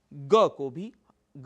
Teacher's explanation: पहला वर्ण क अल्पप्राण है वहां पर बहुत ज्यादा आपको शक्ति लगाने की जरूरत नहीं पड़ती